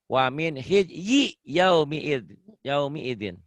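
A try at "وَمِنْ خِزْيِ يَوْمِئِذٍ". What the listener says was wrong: Yaumi idin, gak ada yang panjang. Gak ada yang panjang di sini.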